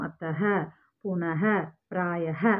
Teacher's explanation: विसर्ग का उच्चारण ह का अघोष रूप जैसा होता है.